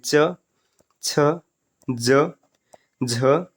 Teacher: च, छ, ज, झ, ये सब तालव्य होंगे